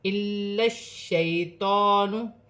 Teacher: لام مشدد کو شین مشدد کے ساتھ ملا کر پڑھا جائے گا